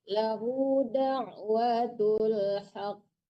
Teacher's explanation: Dipantulkan qafnya, ditasdidkan dulu baru dipantulkan.